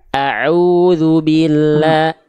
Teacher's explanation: Hamzah pangkat tenggorokan, ain tengah tenggorokan.